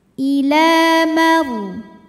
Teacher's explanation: Ila, la matobi'i muqaddar karena huruf lam berbaris fathah panjang, cara bacanya panjang 2 harokat. Ila maru, ra sukun didahului baris fathah dibaca secara tafkhim, tebal.